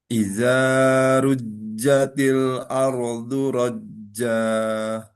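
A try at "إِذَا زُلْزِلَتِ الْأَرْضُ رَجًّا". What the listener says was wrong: Dua harokatnya ini kadang masih kelebihan ya. Idza rujjatil ardu rajja.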